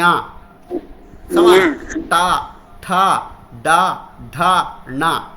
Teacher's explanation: నాలుక పైన తగులుతుంది అనునాసికంతో కలిపితే ణ వచ్చేస్తుంది